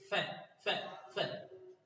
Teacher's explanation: इसके उच्चारण में जीवा दांतों में लगती है और ओष्ठ भी कुछ मुड़ते हैं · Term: दंतोष्ठ